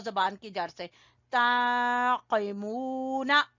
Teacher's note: कौफ को ज़बान की जड़ से, ताक़िमूना, मीम को खींचेंगे वाव मद्दा की वजह से, ताक़िमूना।